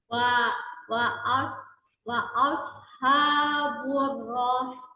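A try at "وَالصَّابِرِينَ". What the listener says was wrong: Oke, ro-nya coba jangan panjang, sin-nya yang dipanjangkan.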